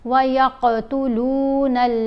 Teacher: قوف کی آواز کو ہلا کر پڑھا جائے گا بہت واضح کر کے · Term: کلکلا